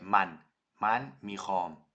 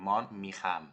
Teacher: And then if you say I, which is man, you're not saying man as in Dutch with the lazy a, but you're saying with the pronounced a, as for example in Spanish, when you say vale, the a, that's the one that you use in Farsi too.